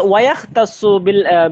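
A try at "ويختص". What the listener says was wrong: ওয়া হবে না, ওয়ুক তাসু বেটা। এই ইয়ার উপরে পেশ হবে না, ওয়ুক তাসু। ওয়াক তাসু না তো, ওয়ুক তাসু।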